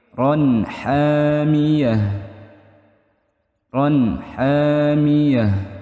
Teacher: Ron ada fathah tain atau tanwin bertemu dengan huruf ha, itu hukumnya idhar halqi, jelas di tenggorokan. Hanya panjang, hamiyah, panjang ya teman-teman, hamiyah.